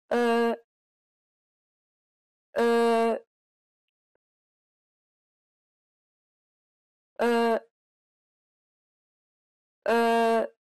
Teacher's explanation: this sound doesn't exist in English but it's very similar to the U in the word fur be sure to compress your lips